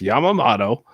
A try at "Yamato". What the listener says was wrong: Yamato. Yamamoto? That seems like too many syllables.